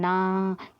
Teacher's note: दांत और नासिक से बोलते हैं दंत और नासिक से बोलते हैं।